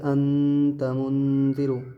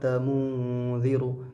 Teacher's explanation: اکثر لوگ اب یہ غلطی کر رہے ہوں گے کہ انت منذر، اس طریقے سے پڑھ رہے ہوں گے، لیکن یہ طریقہ بالکل غلط ہے، جب بھی نون ساکن کی آواز جائے گی بالکل ناک میں لے جا کر کے پڑھنا ہے، جیسے انتا اس طریقے سے پڑھ رہے ہیں تو یہ زبان کی نوک جو ہے اوپر ٹچ ہو جا رہی ہے۔ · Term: اخفا